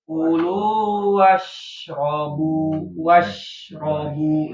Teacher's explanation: Lamani kulu wasrobu Tafashi, salah satu sifat apa yang sering kedengaran dari shin itu tafashi, menyebarnya udara ke rongga mulut.